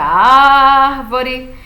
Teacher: porque a sílaba tônica é a antepenúltima então a regra das proparoxítonas é muito simples todas são acentuadas · essa palavra tem a sílaba tônica dela é a antepenúltima não é a última não é a penúltima é a antepenúltima